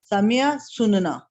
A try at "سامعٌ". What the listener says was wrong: سامعن سننا, بالکل ٹھیک ہے. سامعہ کہیں گے تو وہ تو پھر سامیہ بن جائے گا نا, اس نے سنا, ٹھیک ہے.